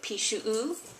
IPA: piʃu'u